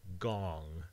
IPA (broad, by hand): gɔŋ